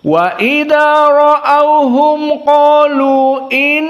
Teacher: dibaca dengan alqasr jadi Hanya dua harakat